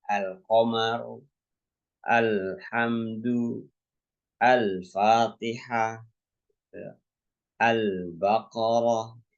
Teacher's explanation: membaca jelas huruf lam pada alif lam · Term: izharul qamariah